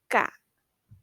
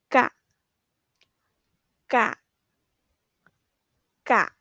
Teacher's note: this sound is between a g and a k